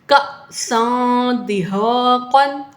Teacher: حمزہ ساکنہ کو جھٹکا دے کر پڑھتے ہیں